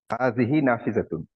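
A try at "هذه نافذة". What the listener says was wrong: Excellent. হাযিহি নাফিজাতুন, good.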